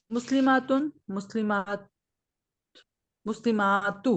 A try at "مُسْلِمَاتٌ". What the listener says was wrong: نہیں آئے گا، دونوں وہی مسلماتن مسلماتن، الف کا تھوڑا سا بڑا کریں بس.